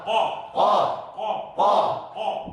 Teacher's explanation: Disebut huruf lahawiyah. Disebut huruf lahawiyah. Artinya huruf sebangsa telak lidah.